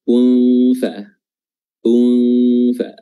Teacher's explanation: Nun sukunnya dibaca ikhfa atau samar-samar, dan cara menyamarkannya adalah dengan meletakkan posisi mulut kita atau bibir kita pada makhraj huruf setelahnya, yaitu huruf fa.